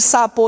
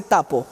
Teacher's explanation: la sonoridad es igual los dos son sordos el punto articulatorio los dos son alveolares e los dos son orales que está cambiando el modo a